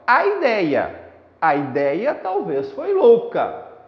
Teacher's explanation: palavra ideia ela tem três sílabas i d e a tá quando eu pronuncio o verso inteiro o a acaba sendo pronunciado junto com o i